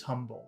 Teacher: he doesn't pronounce the h